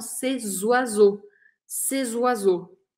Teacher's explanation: Que esse C no plural, C-E-S, quando a próxima palavra começa com vogal, eu grudo o som delas. O som fica meio grudadinho.